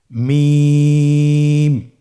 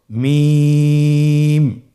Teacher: হরফটি উচ্চারিত হয় দুই ঠোট চেপে ধরে